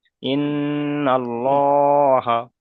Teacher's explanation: নুনের উপরে তাজদিদ এবং মিমের উপর যদি তাজদিদ থাকে তাহলে একালিপ পরিমাণ গণনা করা ওয়াজিব।